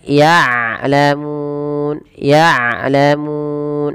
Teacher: Dan jangan sampai dibaca dengan ya'lamun dengan hamzah, tapi dengan ain. Kemudian balafal mun ada mad arid disukun. · Ain sifatnya bainiyah, yaitu surah ainnya tidak diputus ya, tidak begitu, tapi dia mengalir, tidak terlalu dialirkan dan tidak terlalu tengah-tengah.